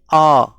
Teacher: तो कंठ से अ का उच्चारण स्थान होता है, यानी जब आप बोलिएगा अ तो देखिए आपका मुंह पूरा खुला हुआ है और आवाज डायरेक्ट कंठ से आ रही है